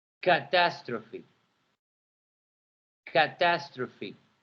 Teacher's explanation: The first syllable has more intonation than the second one.